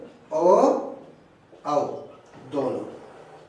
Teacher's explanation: कंठ और ओष्ठ दोनों उच्चारण स्थानों से मिलकर बोले जाने वाले वर्ण है ओ औ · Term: कंठोष्ठ